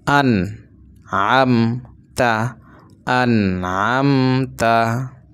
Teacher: এই নুন সাকিনটাকে গুন্না ছাড়া স্পষ্ট করে পড়তে হবে, এখানে কোনো গুন্না করা যাবে না